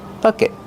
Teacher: Stop the air with your tongue. Make a stop T.